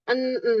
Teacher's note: ujung lidah ketemu dengan gigi ya. Musi gigi seri yang a atas. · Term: huruf nun